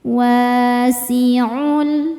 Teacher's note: sebab ada alif sebelumnya fathah cara bacanya panjang dua harakat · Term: mad thobi'i